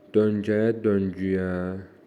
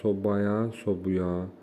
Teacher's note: Açıq sait qapalı olur.